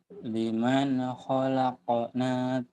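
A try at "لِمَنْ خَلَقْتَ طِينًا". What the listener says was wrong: Khalaqta. Khalaqna. Orang titiknya dua. Liman khalaqta. Lupa titik nih Bu. Liman khalaqta tinan.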